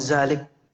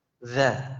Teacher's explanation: Cuman keluarkan sedikit sehingga ketemu itu antara ujung dengan ujung. Ujung lidah dengan ujung gigi seri.